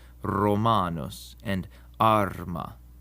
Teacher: The Romans trilled their letter R and even described this as the dog letter because it sounded like a dog when it growls.